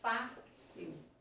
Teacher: o acento agudo que traduz um timbre aberto